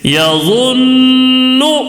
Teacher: آواز کو تھوڑی دیر ناک میں ایک الف کے برابر آواز کو روک کر گھما کے پڑھنا ہے. جیسے یظن، ناک میں تھوڑی اس طرح آواز کو تھوڑی دیر روکنا، اس کو بولتے ہیں یظن. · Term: غنہ